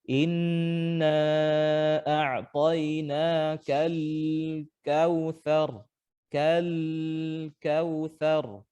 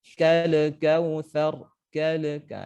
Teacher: diseret saja Pak atau Ibu huruf lamnya sampai kita membaca huruf kaf setelahnya